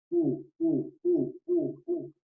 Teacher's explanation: Mi lengua rápidamente que se va a posicionar en la parte más o menos de mi parte inferior de la cavidad bucal, pero en la parte de atrás. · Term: posterior